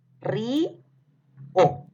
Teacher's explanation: la palabra río tiene una vocal cerrada que es la I, que está tildada, y O es abierta. Entonces se separa de esta forma. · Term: hiato acentual